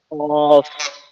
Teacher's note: জিহ্বার গোড়া থেকে উচ্চারিত হয় দুই নোক্তাওয়ালা কফ। জিহ্বার গোড়া থেকে উচ্চারিত হয় দুই নক্তাওয়ালা কফ।